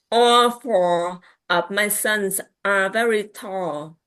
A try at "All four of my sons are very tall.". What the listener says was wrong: Can I get the L at the end of tall?